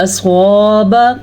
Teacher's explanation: स्वाद को पुर पढ़ेंगे क्योंकि स्वाद हुरूफ मुस्तालिया में से है।